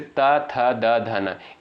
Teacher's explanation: इनका उच्चारण स्थान होता है दंत